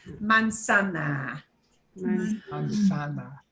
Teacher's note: make sure it sounds like an S, not a Z. It should not buzz like a B.